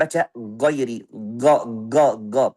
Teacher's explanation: Makhrajnya ghain tapi dengan sifat syiddah. Ghairi itu salah juga.